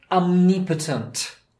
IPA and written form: ɒmˈnɪpətənt (Omnipotent)